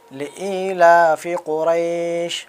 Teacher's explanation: بڑی قاف ہے، ان کو نکالنا ہے قاف کو حلق سے۔ لإیلاف قریش، بڑی شین کو بھی نکالنا ہے، سیٹی مار کے بولنا ہے۔